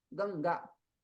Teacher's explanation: आने वाला जो अनुस्वार है, डॉट है, उसका उच्चारण स्थान नासिका है।